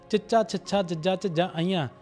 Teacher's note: ਜੀਭ ਸਾਡੇ ਤਾਲੂ ਨਾਲ ਲੱਗਦੀ ਹੈ ਇਸ ਕਰਕੇ ਇਸ ਨੂੰ ਤਾਲ ਵੀ ਧੁਨੀਆਂ ਕਿਹਾ ਜਾਂਦਾ ਆ।